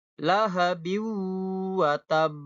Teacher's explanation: Di sini ada hukum bacaan idgham, yaitu idgham bi gunnah, karena ada tanwin di huruf ba itu, harokatnya tanwin, bertemu di depannya dengan huruf waw. Karena huruf waw ini huruf idgham bi gunnah, maka dibacanya dengung, ya. Lahabiu watab.